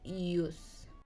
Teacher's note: your tongue is high and back of your mouth. Rounder refers to your lips because they are pushed together and like when you are going to kiss someone. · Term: U vowel